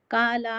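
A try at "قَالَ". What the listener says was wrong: खाला हो गया।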